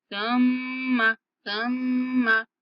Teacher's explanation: सा को नरमी से पढ़ेंगे और मीम की आवाज को नाक में लेके जाएंगे